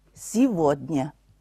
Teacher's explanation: 这个地方的▁г▁发作v▁的音